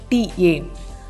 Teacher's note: When pronouncing an English T, you will notice your tongue hits behind your front teeth. A TA sound is made farther back and your tongue strikes the roof of your mouth